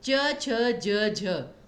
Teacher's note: च वर्ग जिसमें जिह्वा सीधी रहती है